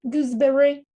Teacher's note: Gooseberry, b, influences s, and s pronounces z because of that voiced consonant following.